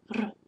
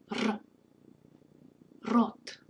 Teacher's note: Be sure to trill this sound. In Russian, it's trilled.